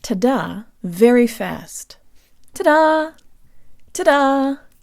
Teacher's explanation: against the roof of the mouth it's strange but true that English speakers perceive this sound as a D but Russian speakers perceive it as an R